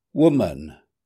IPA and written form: ˈwʊm.ən (woman)